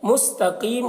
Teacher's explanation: قاف کو پر پڑھیں گے، قاف حروف مستعلیہ میں سے ہے، اور یہاں پر بھی مد عارض وقفی ہوگا قیم میں میم کے اوپر، تو مد عارض وقفی میں طول، توسط، قصر تینوں جائز ہوتا ہے۔